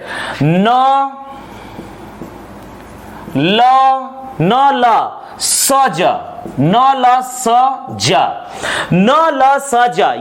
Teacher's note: यदि किसी वर्ण का उच्चारण हमारे मुख के वत्सर्य कटक के द्वारा होता है तो इसे कहा जाता है वत्सर्य उच्चारण